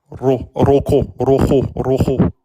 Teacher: le RA, c'est une consonne apicale vibrante se produit par contact de la pointe de la langue avec le palais. Il mettent un Roulé.